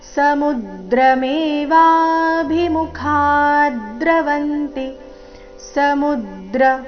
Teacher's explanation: ಸಮುದ್ರ ಮೂ ಮೇಲೆ ಆಘಾತ